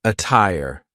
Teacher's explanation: a tire is an example of a Double T that sounds like a true te